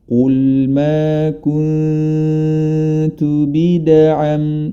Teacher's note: Huruf dal memiliki sifat qalqalah atau memantul, ya. Jadi jangan sampai ketika membaca qalqalah terputus suaranya.